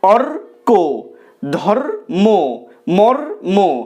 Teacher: রেফের এই যে রটা সেটা রয় হসন্ত এর মতো উচ্চারিত হবে।